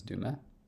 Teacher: the first shift we, of course, made was that unstressed ah becoming a schwa. Because again, those unstressed ah sounds are schwized. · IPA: [dumə]